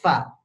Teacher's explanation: gigi atas dengan bibir bawah diadu nih ya gigi atas dengan bibir bawah Fa Jangan dibalik jangan bibir atas mengadu dengan gigi bawah Fa